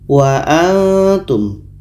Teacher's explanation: ketika nun mati bertemu Ta ini ikhfa Ta ini letaknya di ujung lidah